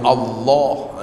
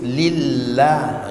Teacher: kadang-kadang lam dibaca dengan tebal pada kalimah Allah ya lam dibaca tebal dan kadang-kadang lam dibaca dengan nipis